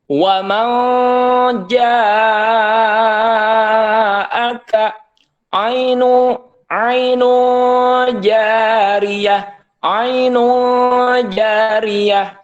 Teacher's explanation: Jib maka sudah dipastikan itu adalah hukumnya ikhfa w w ya Jadi nunnya tidak terbaca gitu ya disamarkan nunnya